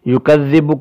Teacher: جائے گی، یکذب کی ذال بھی باریک پڑھی جائے گی، یکذب، ذال پر ٹھہراؤ اس لیے کر رہے ہیں کہ ذال پر تشدید ہے